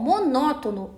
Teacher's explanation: Essa questão trabalha com acentuação gráfica e deseja a alternativa que está acentuada pela mesma regra de monótono. Bom, monótono é uma proparoxítona, ou seja, possui a antepenúltima sílaba tônica e toda proparoxítona é acentuada.